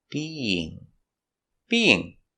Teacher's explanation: we have two vowels together beinging we have the Y sound in the middle to connect the vowels being not beinging it's a very soft sound beinging beinging in